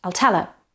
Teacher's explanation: stress in tell. The surrounding words are unstressed.